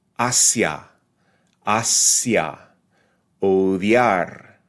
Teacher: It's what's called a rising diphthong because the second sound receives a little bit more emphasis.